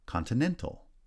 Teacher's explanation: Continental, secondary stress on the first syllable and then primary stress on the third syllable.